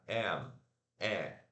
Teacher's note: A língua foi lá embaixo. Esse AE aqui do inglês, a sua língua tem que ficar aqui no meio do E e do A.